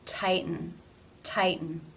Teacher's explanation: the tongue does not change position between the T and the end sound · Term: stop